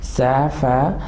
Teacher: سا کو مزید وسلنگ ساؤنڈ کے ساتھ پڑھیں گے، فا مزید شارپ ہوگا